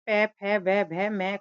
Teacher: पै वर्ग के सभी वर्ण जैसे पै, फै, व, भ, म का उच्चारण दोनों होठों के स्पर्श से होता है।